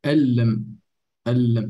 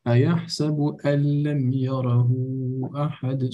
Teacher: So the noon is silent. It's actually merged with the lam. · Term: idgham